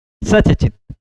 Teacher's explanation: सत चित नहीं बोलेगा, सच चित हो जाएगा